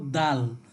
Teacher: সামনের দুই দাঁতের মাড়ির সাথে আমরা কি করব, জিহ্বাকে লাগিয়ে উচ্চারণ করব দাল